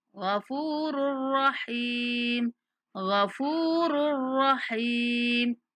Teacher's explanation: را کو را کے ساتھ ملاتے ہوئے بلا غنہ ہم نے پڑھنا ہے، غنہ نہیں ہونے دینا یہاں پہ، ٹھیک ہے.